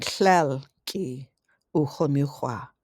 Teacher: the words tlelki, aki, and kinki have no stressed vowels and are pronounced as if part of the following attached word